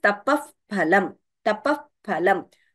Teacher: So pavarga and upadmaniya, the lips are used to pronounce. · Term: upadhmaniya